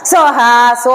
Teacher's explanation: സോ എന്നുള്ളതിന് സ്വരിതം ഉണ്ട് മുകളിൽ ഒരു വര കാണാം ഉയർത്തണം